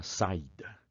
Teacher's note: Amigão, se você não acentuar, o I vai continuar sendo a semivogal fracote de um ditongo. Se você acentuar, o I ganha autonomia, ganha liberdade, ele vai virar de semivogal, ele vai virar uma vogal e vai poder ficar sozinho numa sílaba, só ele, e pronunciado bonitão, como é a palavra saída.